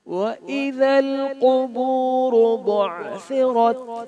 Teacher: بعثرت میں عین کو حلق کے وسط سے ادا کرنا ہے اور را کو موٹا پڑھنا ہے. · قاف کو موٹا پڑھنا ہے، را کو بھی موٹا پڑھنا ہے